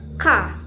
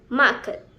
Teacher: the British English dialect does not pronounce the letter R in the word, especially if it is at the end of the word. For the example, the word car, when the British, people say like car.